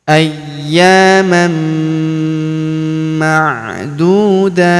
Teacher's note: kita sukunkan atau kita matikan dengan kita berikan hambusan tipis ya